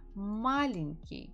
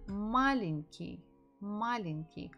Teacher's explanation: The stress falls on the first syllable.